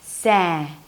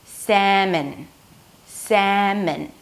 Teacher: when the as in cat appears before an M sound, which is the next sound because there is no L, the A turns more into an E, sa. The second syllable has an M sound, a schwa, so there is no O, and an N.